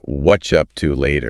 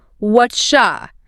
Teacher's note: The what are you becomes whatcha. The vowels get reduced, the consonants link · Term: linking